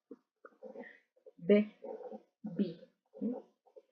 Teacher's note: la B larga es un poco más explosiva es decir que los labios hacen como un sonido hacia afuera